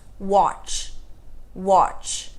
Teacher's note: Não tem nenhum som de vogal depois. Ch. Isso significa que quando nós tivermos o verbo watch ou qualquer um dos verbos que a gente vai tratar na sequência, nós não adicionamos nenhum som de vogal depois.